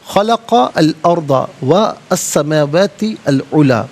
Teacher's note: سین حرف شمسیہ ہے، حرف شمسیہ وہ حرف کے جس پر الف لام ہو لیکن لام کو پڑھا نہ جائے تو یہاں سین کا ساؤنڈ ادا کیا جائے گا